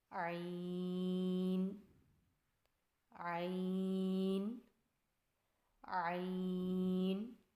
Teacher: عین کی ادائیگی میں زبان کی جڑ کو حلق کی طرف مضبوطی سے دباتے ہوئے باریک اور رگڑ کھاتی آواز میں پڑھیں